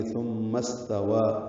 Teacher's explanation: ثم استوى سین ساکن پہ ہم سے واو کو دو حرکات لمبا کرنا ہے کھڑا زبر کی وجہ سے